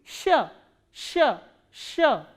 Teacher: Sh is a soft consonant which is produced when your tongue stretches upward and your middle part of the tongue goes upward to the hard palate. Then this sound is produced, sh, sh, sh.